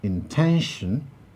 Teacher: when we produce the word intention ten is the place where the primary stress lies